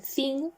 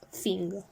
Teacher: The TH sound is often replaced by an F sound